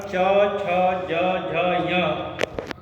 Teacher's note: इसके बाद दूसरे स्थान पर दूसरा वर्ग है च वर्ग और च वर्ग का उच्चारण च, छ, ज, झ, ञ तालु से होता है और तालु से होने के कारण इन वर्णों को तालव्य कहते हैं। और चूंकि थोड़ा संघर्ष भी होता है, इसलिए इन्हें तालव्य संघर्षी कहते हैं।